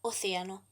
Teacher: el acento tónico está en la antepenúltima sílaba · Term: esdrújulas